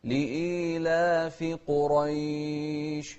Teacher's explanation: انتبه للقاف المفخمة والراء المفخمة في كلمة قريش.